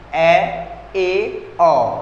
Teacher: अर्धविवृत जिसमें आधा मुंह खुलता हो